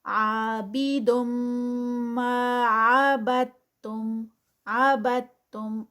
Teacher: با جو ہے وہ سیدھا تا میں مرج ہوگا، درمیان سے دال جو ہے وہ سکپ ہو جائے گا